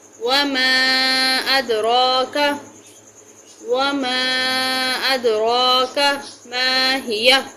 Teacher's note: وما پہ مد ہے، اس کو لمبا کریں گے